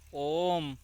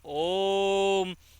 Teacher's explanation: और प्लुप्त स्वर में दीर्घ से भी ज़्यादा समय लगता है।